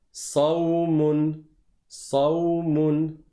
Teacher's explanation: C'est comme le sin, sauf que tu relèves, tu soulèves la langue à l'arrière et ça donne un son emphatique.